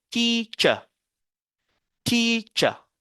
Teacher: En adoptant l'accent britannique, généralement, on ne prononce pas le R final d'un mot dans beaucoup de cas. Alors, le ER ici va être remplacé par ce symbole qu'on appelle le schwa qui est E